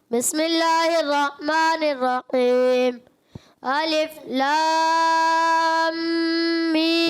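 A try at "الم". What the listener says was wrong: مد کو اور کھینچے پہلے پہلے مد پوری کرے پھر اس کے بعد غنہ کرنا ہے.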